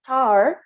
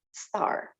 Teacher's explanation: the t pronunciation of the phoneme t with aspiration is used word initially as in tar, but never after another consonant in initial position as in star.